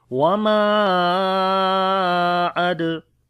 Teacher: On the dal we make qalqala, it is the weak qalqala.